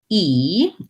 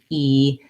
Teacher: E is very closed and in the front. So when I make the E vowel, my tongue fills up most of my mouth.